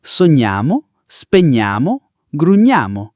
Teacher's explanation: If we don't include the I, we respect phonetics, because in pronunciation, the I isn't heard in these verb forms